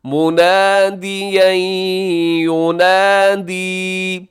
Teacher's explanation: آخر میں الف ہے، الف مدہ، منادیا ینادی، یہاں ادغام ہے، منادین تنوین کے بعد یا ہے تو یہاں کریں گے ادغام غنے کے ساتھ